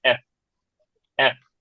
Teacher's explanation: বাংলায় দুই ঠোঁট বন্ধ রাখলে হয়ে যায়, বাট ইংলিশে আমরা যখন এফ বলবো তখন উপরে দাঁত নিচের ঠোঁটের সাথে লাগবে